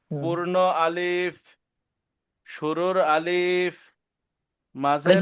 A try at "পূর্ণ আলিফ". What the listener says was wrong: টান নাই পূর্ণ আলিফ আলিফ টান হবে না